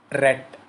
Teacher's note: Next come to the seventh category, frictionless continuant. It is ra sound.